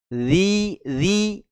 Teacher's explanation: letak makhrajnya ada di ujung lidah yang bersentuhan dengan ujung dua gigi seri atas